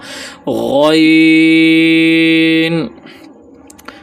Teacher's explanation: غین جو ہے یہ حروف مستعلیہ میں ہے اور موٹا بھی ہوگا اور پھر یہ آخری حلق سے ادا ہوگا، یعنی درمیانی حلق کے اوپر سے جو حصہ ہے وہاں سے ادا ہوگا.